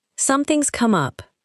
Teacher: Notice that something has becomes something's.